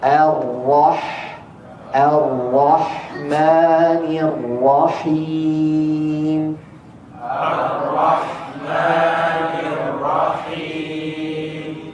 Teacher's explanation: Huruf ha makhrajnya, tempat keluarnya ada di tengah tenggorokan. Bukan seperti huruf ha yang ada di pangkal tenggorokan. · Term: ha tengah